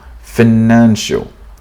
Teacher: Stress on financial, stress on the second syllable, financial.